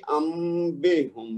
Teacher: نون ساکن کے بعد با ہے تو ہم کیا کریں گے, نون ساکن کو میم میں بدل دیں گے. انبہم نہیں پڑھیں گے, وہ غلط ہے.